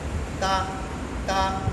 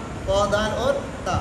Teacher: زبان کی نوک یہ جو ثنایا علیا جو سامنے کے دو دانت ہیں اس کے جڑ میں لگے گی